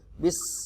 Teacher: Sinnya sukun, maka sifat asofirnya harus jelas. Asofir adalah suara desis burung. Bis, jadi jelas sin matinya, sin sukunnya.